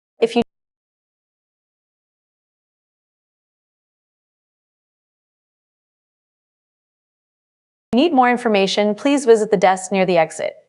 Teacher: Link the need for more information with the action to visit the desk. Be careful with the cluster near the exit, ensuring the T in exit is fully pronounced.